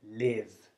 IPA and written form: lɪv (live)